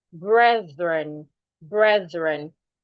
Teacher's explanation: The TH in that word, you need to put your tongue outside. It makes the voiced TH.